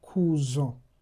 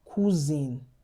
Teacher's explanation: what usually happens is that the nasal sound will disappear and you you pronounce the consonants normally, the way you would have pronounced it if it wasn't nasal.